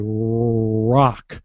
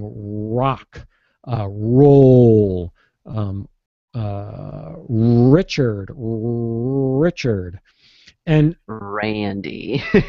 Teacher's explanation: when I say an R from the beginning of word it could be a little different I can round my lips a little closer